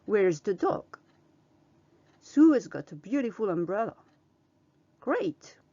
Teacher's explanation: elle descend pour les affirmations, les questions en WH et les exclamations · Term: intonation sera descendante